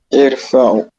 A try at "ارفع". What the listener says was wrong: ارفع. C'est pas irfa. Irfa. Il y a soukoun à la fin.